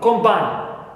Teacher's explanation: The first syllable is stressed, and I have the first vowel O.